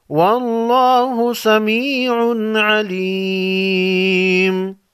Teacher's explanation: لفظ اللہ کے لام کو موٹا پڑھیں گے کیونکہ اس سے پہلے والے حرف واو پر زبر ہے